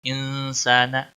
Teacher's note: نون پر اکفا ہوگا کیونکہ آگے اکفا، حروف اکفا کا سین آ رہا ہے. اس اکفا کو اکفا حقیقی کہتے ہیں، یعنی گناہ ہوگا اس کے اوپر.